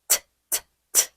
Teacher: 입천장을 밀듯이. 근데 이번엔 시동음이 없이 공기만요. 성대를 울리지 않으니까 훨씬 쉽죠. 윗니 바로 뒤쪽에 혀 소리입니다.